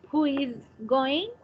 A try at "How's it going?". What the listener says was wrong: Pero no who, no who. How's it going? How's it?